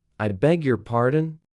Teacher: Say it with the rising tone, like a question.